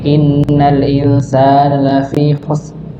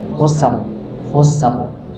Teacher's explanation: Jadi ra-nya tidak terdengar. Harusnya ditampakkan dan dia ditebalkan.